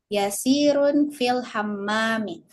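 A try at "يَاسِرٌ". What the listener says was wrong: Yasirun. Nah, yanya yang panjang.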